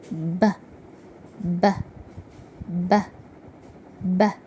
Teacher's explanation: بي بيكون voiced sound يعني لما احط ايدي كده او احط صباعي عند الحنجرة بحس بصوته